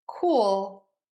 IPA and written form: ˈkuwɫ (COOL)